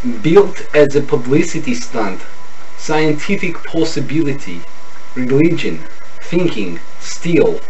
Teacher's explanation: The short I becomes the long E.